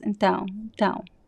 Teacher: the last U sound is very weak. It almost disappears.